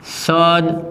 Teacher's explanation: અહીંયા રહેલો દ વર્ણ ઘોષ વ્યંજન છે અને ત્યારબાદ આવતો ક વર્ણ છે એ અઘોષ વ્યંજન છે, માટે અહીંયા દ વર્ણ જે વર્ગનો છે તેના વર્ગનો પ્રથમ વ્યંજન એટલે કે ત, તો શબ્દની સંધિ સત્કાર્ય થાય.